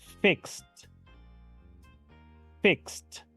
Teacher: una consonante sorda o su última consonante es una consonante sorda la e d en pasado simple suena como una t la vamos a pronunciar como la letra T · fíjense que estoy pronunciando la terminación Ed como la letra T